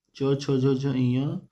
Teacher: तालु और जीभ के स्पर्श से बोले जाने वाले वर्ण